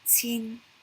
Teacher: 1,000 is 千, high falling, 千